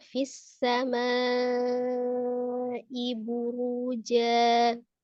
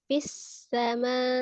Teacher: Fis samai. Ketika diwasal hamzahnya tidak dinabarkan, tapi ketika diwaqaf hamzahnya disukunkan dengan cara dinabar. Jadi kalau diwasal fis samai buruja, tapi kalau dia diwaqafkan fis sama, ya, ada nabar di hamzah sukun ketika sebelumnya adalah mad.